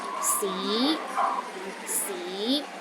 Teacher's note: the second tone start with a low pitch and Rises to a high pitch